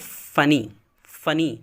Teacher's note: اس طرح فنی، فنی نہیں بولتے ہیں. FUNNY، ویسے تو لکھا ہوا ہے ڈبل این ہے لیکن ڈبل این کا تلفظ نہیں ہوتا، صرف ایک ہی کا ہوتا ہے